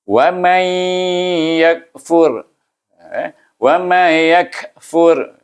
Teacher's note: Selepas nun sukun bertemu dengan ya. Kita kena baca dia dengan idgham ma'al gunnah.